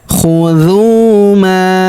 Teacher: Fawqakumut tura khudhu ma, huruf dhu kita panjangkan 2 harokat karena terdapat wawu sukun di depannya, alifnya tidak dibaca. Khudhu ma, huruf ma kita panjangkan 4 atau 5 harokat karena di depan huruf ma terdapat alif yang di atasnya terdapat tanda garis bacaan panjang 4 atau 5 harokat, yang ini ya.